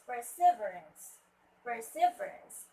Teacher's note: The stress word should be at the third syllable, right?